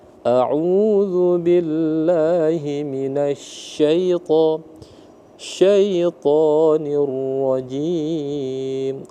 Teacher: Ra-nya tebal, tafkhim ya.